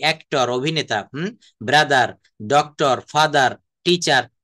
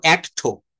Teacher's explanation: ওয়ার্ডের শেষে আর থাকলে ব্রিটিশরা আর এর উচ্চারণ করে না।